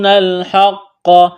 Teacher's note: ہا کو قاف کے ساتھ ملائیں گے, قاف کو موٹا کرنا ہے, بڑا قاف ہے نقطوں والا, قاف کے اوپر تشدید ہے, سختی کریں گے.